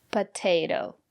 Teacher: the first letter T is pronounced as t because the syllable after the letter T is stressed